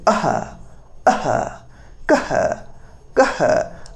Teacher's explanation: ಅಹ ವಿಸರ್ಗ ಕಂಠದಗಿ ಹುಟ್ಟುತ್ತ ಇವೆಲ್ಲವೂ ಕಂಠದ ಸಹಾಯದಿಂದ ಹುಟ್ಟಿರತಕಂತ ಸಹಾಯ ಹುಟ್ಟುವಿಗೆ ಕಂಠಕಾರಣೆ ಆಗುವುದರಿಂದಾಗಿ ಕಂಠವರಣಗಳು ಎಂದು ಕರೆಯುತ್ತೇವೆ